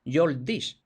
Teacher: Vemos ahí muchas apócopes, se han perdido muchas es.